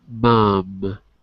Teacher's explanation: Mom the sound goes through your nose